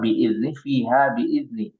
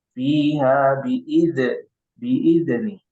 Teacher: itu tidak memantul ya. Tidak dipantulkan. Jadi bukan qalqalah.